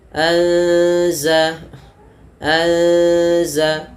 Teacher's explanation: anza anza ya ada mati bertemu Za kita namakan dengan Ikhfa cara membacanya itu huruf nunnya samarkan kepada huruf zalnya